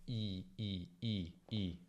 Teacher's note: È importante che la lingua rimanga ferma, ok? Non deve muoversi, perché altrimenti rischiamo di creare un piccolo dittongo, cioè una combinazione di vocali. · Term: suono puro e continuo